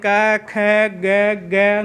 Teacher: क वर्ग कंठ से बोल रहे हैं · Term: कंठ्य वर्ण